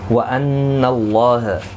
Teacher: نون مشدد پر غنہ ہوگا